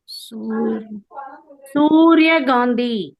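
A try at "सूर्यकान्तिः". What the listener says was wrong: அந்த இடத்துல காந்தின்னு சொன்னா தப்பு. காந்தின்னு சொல்லிட்டு விட்டுற கூடாது. ஒரு விசர்க போச்சுக்குமே. அப்புறம் அது ஒரு விசர்க்கம்.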